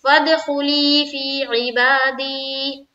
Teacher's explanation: जैसे बा के ऊपर खड़ा जबर है, खड़ा जबर बराबर होता है अलिफ मद्दा के, खड़ा जबर को एक अलिफ की मकदार के बाकदर खींचकर पढ़ेंगे।